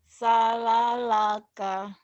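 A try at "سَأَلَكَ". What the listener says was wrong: Sa'a, bukan salalaka ya di sini, sa'alaka. Sa'alaka,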